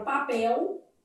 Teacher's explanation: esse L pode ser lido com som de U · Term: vocalização da letra L